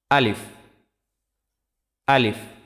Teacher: আলিফ মুখের খালি জায়গা থেকে উচ্চারিত হয়।